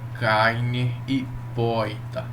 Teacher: o chamado R retroflexo, aquele R dobrado que, junto com a letra I, resulta naquele jeito de falar como carne e poeta, né?